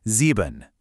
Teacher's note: And for 7, sieben, just picture lucky number 7, but hit it with a big, drawn-out Z at the start